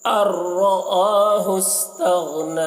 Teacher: نون کو نہیں پڑھیں گے، حمزہ کو راء سے ملا کر پڑھیں گے